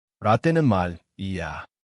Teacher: Hear how 말이야 became 마리야? That liaison makes you sound natural.